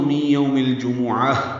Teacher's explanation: تائے مربوطہ ہے، ہا میں تبدیل ہو جاتی ہے۔